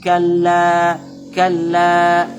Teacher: Jadi la-nya ini bertasdid, jadi ditekan kalla, kalla, tapi tidak berdengung. Tidak boleh kita kalla, kalla, karena kadang kita mendengar ada yang membaca seperti itu.